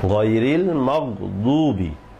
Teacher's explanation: গায়রিল মাগদুবি, দদ মোটা, মাগদুবি গাইন দদ 2টাই মোটা হবে, ইস্তেআলার অক্ষর